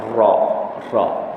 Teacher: ujung lidahnya ke atas, berhampiran dengan langit atas. Dia melentik ke dalam. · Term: inhiraf